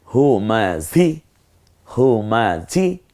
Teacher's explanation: আর এই হটা কণ্ঠনালীতে ছেড়ে দিয়ে ঝটা একটু ঝিঝি আওয়াজে হবে হুমাঝি হুমাঝি খুব তাড়াতাড়ি উচ্চারণ করতে হয় হরকতের উত্তর এরপরে হচ্ছে